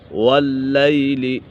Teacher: واللیل لام مشدد ہے، اسے جماؤں کے ساتھ پڑھیں گے